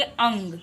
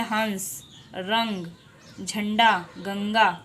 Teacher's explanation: अंग जब आप बोलते हैं तो आपको उसमें जैसा लगता है कि हमारे नाक से भी फील हो रहा है। ठीक है, यानी इसका उच्चारण हम लोग कैसे करते हैं, नाक से करते हैं। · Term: अनुस्वार